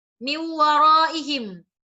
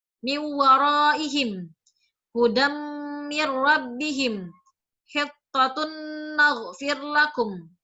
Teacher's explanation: Jadi ketika nun tanwinnya, nun mati dan tanwinnya ini tidak dibaca, tapi langsung dimasukkan ke huruf yang selanjutnya. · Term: idgham bi gunnah